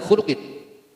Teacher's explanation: dibaca terang atau tidak ditahan karena mengandung hukum idhar, yaitu idhar halqi, kasrotain bertemu ain